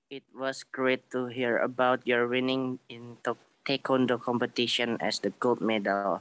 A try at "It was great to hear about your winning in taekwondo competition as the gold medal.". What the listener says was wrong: Oke, good job.